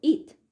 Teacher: In the word it, the realization of T is unaspirated, as are all voiceless plosives when they occur at the end of a syllable